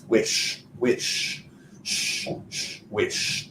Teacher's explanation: there's no vibration with our sh sound